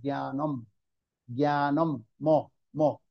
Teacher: যদি জ্ঞানের পরে যদি অনুস্কার থাকে তাহলে কি হবে, ম উচ্চারণ হবে, সেটা জ্ঞানং ন হবে, হবে না, ন হবে না, সেটা ম হবে, জ্ঞানম, জ্ঞানম, ম, ম।